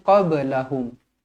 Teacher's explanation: huruf ba Qalqalah sughra dibaca melantun